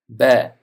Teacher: Arab tilidagi ba harfi oʻzbek alifbosidagi b harfining tovushiga, talaffuziga oʻxshashdir. Ya'ni ba harfi teppa va pastki lablarning bir-biriga yopishishidan chiqadi